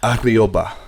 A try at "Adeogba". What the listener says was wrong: It's a silent G, though. It's a silent. The G's are silent.